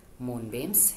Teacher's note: Moon beams has two syllables and the stress syllable is in the Moon